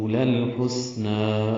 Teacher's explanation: لام ساکن پہ اظہار، سین ساکن پہ ہمس، نون پر کھڑا زبر 2 حرکات لمبا